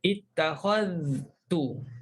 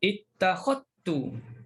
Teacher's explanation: Zal dah hilang. Lidah kita dah tak letak pada zal lagi.